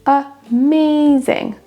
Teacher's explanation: C'est la deuxième syllabe qui ressort plus.